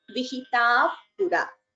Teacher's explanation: Visarga followed by pa, so upadhmaniya